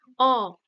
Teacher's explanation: ঠোঁটটা কুঞ্চিত হচ্ছে একটু অ তাই না গোল হয়ে আসছে · মুখ বিবরণের আয়তন তুলনামূলক বেশি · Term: কুঞ্চিত স্বরধ্বনি